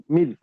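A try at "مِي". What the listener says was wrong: তার মি, মি টান দিতে হবে। তার মি, ইয়া মাদ্দা তো।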